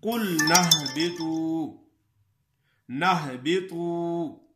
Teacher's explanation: اگر ہاں ملا کر پڑھیں گے تو پھر قُلْنَا والا الف مدہ اور حمزہ وصلی یہ دونوں حذف ہو جائیں گے